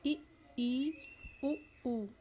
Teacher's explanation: जिन स्वरों के उच्चारण में मुख द्वार बंद रहता है, लगभग बंद ही रहता है। देखिए इ, ई, उ, ऊ।